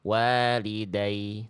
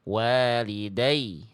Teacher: Bunyi ya-nya ditekan sehingga nadanya lebih tinggi. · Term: naber